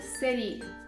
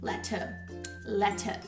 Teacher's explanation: Um britânico, ele falaria esse sonzinho do T muito mais definido.